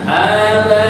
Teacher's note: aba namanya mad wajib muttasil, kita panjangkan 4 harokat